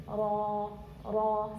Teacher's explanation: istifal infitah ibllaq tikrar dan inhiraf itu Semua ada tapi bedanya ketika diberharakat fathah atau atau damah dia agak tebal jadi lidahnya Kendung ee apa namanya ee ujung lidahnya Kung agak